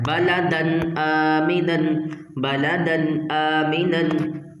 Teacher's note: پر جو دال ہے، دال میں جو نون ساکن کی آواز ہے اس کو ہم نے ظاہر کرنا ہے ، ٹھیک ہے، ظاہر کرنا ہے اور واضح کر کے پڑھنا